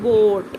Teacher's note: This O sound is a bit longer than lock